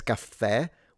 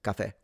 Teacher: Italian says cafe with kind of a longer sound because it's a double. Sicilian simplifies and just says cafe.